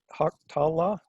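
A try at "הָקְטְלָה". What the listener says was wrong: Hok. No, this one does. Hok. Hoktala. That unaccented syllable with that silent shaba right there makes this O. Hok.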